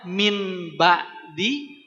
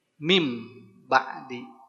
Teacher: Merubah merubah bunyi nun sukun atau tanwin menjadi Mim ketika bertemu dengan huruf ba saja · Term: iqlab